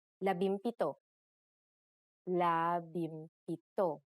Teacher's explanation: If a P follows the NG connector, the NG becomes an M